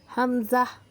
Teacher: حمزہ حلق کے آخری حصے سے ادا ہوتا ہے. حمزہ، حمزہ کو بھی کھینچنا نہیں ہے، جلدی پڑھنا.